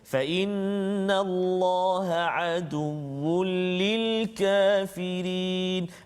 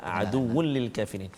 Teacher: Hukum dia idgham bila gunnah. Maksudnya masukkan bunyi tanwin tu ke dalam lam tanpa dengung.